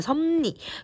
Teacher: 자, 그러면 이걸 발음을 한번 해보시면 그치 얘들아, 섭리. 그러면 비읍이 미음으로 리을이 니은으로 바뀌었어요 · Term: 상호동화